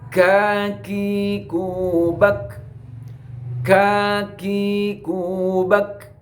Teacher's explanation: Dari bangsa lidah. Kaf keluar dari pangkal lidah mengarah ke bawah serta menepati dengan langit-langit mulut atas.